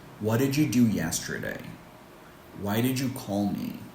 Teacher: questions that cannot be answered with yes or no and require a longer answer, we tend to go down in intonation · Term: fallen intonation